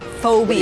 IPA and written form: ˈfəʊbi.ə (Phobia)